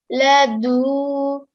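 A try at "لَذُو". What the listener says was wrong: Okay, dhal, not a dal sound. Ladhu.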